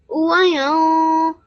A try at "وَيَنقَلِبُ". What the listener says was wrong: You made your qaf quite long. What sign can you see on top of the qaf? A fatha, and you made it longer than that.